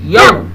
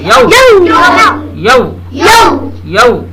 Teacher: یاؤ نہیں, یو. خوب گول کر دینا ہے